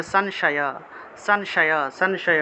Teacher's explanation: অনুস্বার যদি শব্দের মাঝখানে থাকে তাহলে ন এর মত উচ্চারণটা আসে